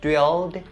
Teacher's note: There are only a few pronunciation points here for this phrase, and the first one is about the word "drilled" so drill when it is an infinitive it ends with an / l / sound and /l/ is a voiced consonant. So the ed part at the end of this word has to be pronounced as the /d/ sound so drilled and the next point is upon the word "head".